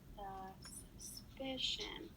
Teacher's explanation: the PI in suspicion is stressed